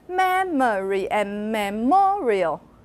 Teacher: You're shifting your stress, and you're also making the stressed one higher and actually louder and longer.